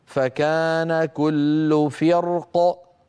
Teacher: اما عند الوقف على فرق بالسكون ففي الراء التفخيم لا غير